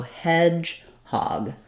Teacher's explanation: it's sort of stressed in both syllables with the primary stress being on the first syllable so Hedgehog so it's sounds like hedge um primary stress on · primary stress on hedge secondary stress on hog